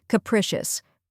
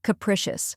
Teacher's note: Next is prish, which rhymes with wish and is stressed.